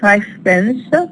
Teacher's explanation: five ends with v but we we add pens five pens the V is used as F because the neighboring sound is a voiceless consonant which is p · is a voiceless consonant which is p so here we have a case of assimilation in relation to voicing a voiced sound becoming voiceless